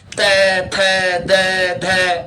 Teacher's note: दांत के पीछे वाला भाग और जीभ के आगे वाला भाग चिपकाना पड़ता है बार-बार